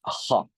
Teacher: we have, again, guttural fricative, which is ha. Ha is velar.